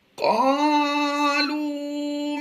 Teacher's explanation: قاف الف زبر قا، یہاں پر الف مدہ ہے، لام واو پیش لو واو مدہ ہے. دونوں کو ہم لمبا کر کے پڑھیں گے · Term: حروف مدہ